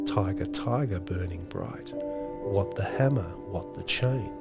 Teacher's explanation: think about the strong regular and ordered rhythm in the poem much of the poem is actually written in trochaic stressed unstressed lines